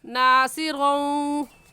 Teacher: یہاں پر غنہ کرنے کے ساتھ ساتھ ادغام بھی ہو رہا ہے